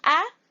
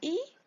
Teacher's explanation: Cuando decimos A, abrimos muy grande, E también y la O. Sin embargo, cuando hacemos la I, nuestra boca se ve mucho más cerrada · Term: vocales abiertas